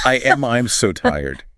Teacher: your mouth will insert a tiny Y sound because your tongue is already high and flat in your mouth.